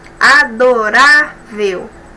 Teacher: Paroxítona, a penúltima sílaba é a mais forte. E é terminado diferente, olha o L aqui, ó.